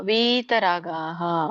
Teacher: ವಿತರಾಗ ಅಲ್ಲ, ದೀರ್ಘ ಇದೆಯಲ್ಲ, ಸೊ ಹಾಗಾಗಿ ಎಳಿಬೇಕು.